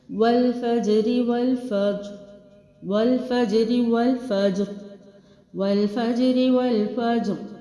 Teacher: فا کے اوپر زبر ہے، اسی سے میں نے زبر کے ساتھ جیم کو باؤنس کر کے بھی پڑھنا ہے اور را کو موٹا بھی پڑھنا ہے